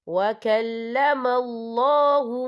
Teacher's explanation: یہاں اللہ کا نام پر پڑھا جائے گا کیونکہ اللہ کے نام سے پہلے زبر ہے